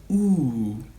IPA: u: